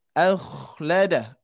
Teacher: huruf kho ini di tenggorokan atas · Jadi huruf kho ini sifatnya mendengkur